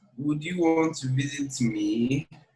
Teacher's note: The me should end with a rising tone.